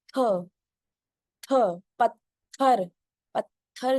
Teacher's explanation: दोनों दांतों के बीच में टंग आएगी